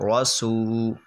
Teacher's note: را زبر را، سین واو پیش سو، یہاں پر واو حروف مدہ حرف مدہ ہے، اور حروف مدہ آپ نے پڑھے ہیں 3 ہیں، الف واو یا، یہ جہاں پر بھی آتے ہیں ان سے پہلے والا ورڈ ان کی وجہ سے کھنچتا ہے، تو یہ کھنچے گا رسو، اور را موٹا ہوگا کیونکہ را پر زبر ہے